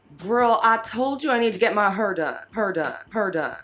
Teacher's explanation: It is her for here, or R centralization.